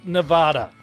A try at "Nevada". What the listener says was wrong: Not the way you just pronounced it. It's pronounced Nevada. So not Nevada, Nevada. No emphasis on, not so much emphasis on the A there. Nevada.